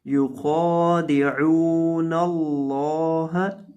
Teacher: یخادعون اللہ، خا کو آپ نے موٹا کرنا ہے، یخا نہیں، خا کو ہارڈ پڑھنا ہے، اس کو موٹا پڑھنا ہے کیونکہ یہ موٹے حروف میں سے ہے.